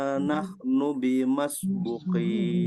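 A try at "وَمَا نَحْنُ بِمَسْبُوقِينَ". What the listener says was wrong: Nahnu bimasbuqin. PR hati-hati jangan ada tamtid. Tamtid itu artinya memanjangkan huruf yang pendek. Nahnu dibaca pendek, tidak boleh dibaca nahnu bimas. Tidak, tapi nahnu bimasbuqin itu ya. saja, sisanya udah bagus.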